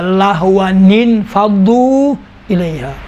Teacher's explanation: جیسا لہون فضو الیہا، لہون تھا، دیکھیں ون یہ تنوین کا نون ساکن، ان فضو میں کیونکہ ملنے سے حمزے وصل گر جاتا ہے، یہ نون ان کے بعد یہ نون ساکن دو ساکن مل جاتے ہیں، لہٰذا تنوین والا جو نون ہے اس کے نیچے کسرہ دیں گے تو یہ التقاء ساکنین کا مسئلہ ختم ہوگا۔